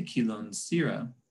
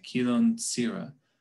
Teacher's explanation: that voiceless alveolar fricative s is pronounced instead as a voiceless alveolar affricate